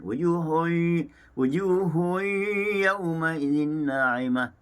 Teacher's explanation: Seperti yang nyatakan tadi, bagi bacaan khalat dibaca dengan tahqiq, sama seperti bacaan hafal asim dengan bacaan dibaca secara idgham ma'al ghunnah, dimasukkan didengungkan